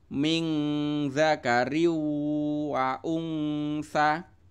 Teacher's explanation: Ini ada nun sukun ketemu dza ya, nun sukun ketemu dza itu adalah bacaan ikhfa, artinya dibaca samar-samar. Kemudian di sini ada tanwin bertemu wawu, itu bacanya adalah idgham bihunnah, yaitu tanwinnya dimasukkan ke huruf wawu kemudian dibaca sambil dengung.